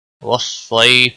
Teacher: صاد کو موٹا پڑھیں گے، یا لین ہے، اور وقف کی صورت میں 3 سے 5 الف کے برابر آپ وقف کی صورت میں کھینچ کر وقف کریں گے۔